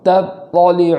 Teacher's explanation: خوب فرق کرتے ہوئے پڑھنا ہے تا کا اور طا کا، تا کو باریک پڑھنا ہے اور طا کو پور کرنا ہے